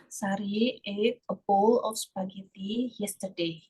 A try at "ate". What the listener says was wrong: Nah, kalau kamu bacanya eat, itu masuknya balik lagi nih. Balik lagi ke verb one. Ini bukan eat cara bacanya. Cara bacanya apa? Eat. Eat. Cara bacanya kayak gini.